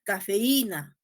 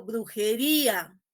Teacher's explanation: ¿Se dan cuenta que esa I y esa U tiene presencia sonora? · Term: hiato acentual